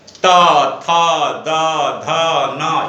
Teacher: त दांत से आवाज निकलता, दांत को स्पर्श करते हुए ध्वनि निकलती है